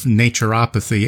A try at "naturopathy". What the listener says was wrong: It's actually a lighter A. It's naturopathy.